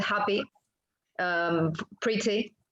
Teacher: The last sound is an in-between case. It's neither long nor short. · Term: archiphoneme